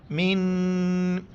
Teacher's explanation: نون پر اخفا کریں گے، اخفا یعنی الکا سا ناک میں پڑھ لینا